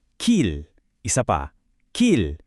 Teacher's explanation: kapag ito ay nasa dulo as a batchim, palaging mayroon siyang malambot at parang dumadaloy na L sound. Parang L sa salitang ball. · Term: soft L